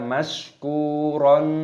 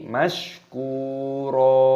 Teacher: Ku, panjangkan kafnya, ada wawu sukunnya, mad tabi'i, panjangkan 2 ketukan saja, jangan panjang-panjang. Roknya di sini dibaca panjang, mad iwad, jangan dibaca mashkuron, tidak boleh, tapi mashkuro.